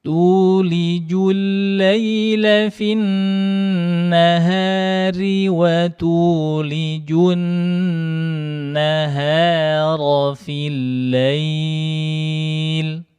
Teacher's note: Lail itu juga 4 harokat. Mad linnya.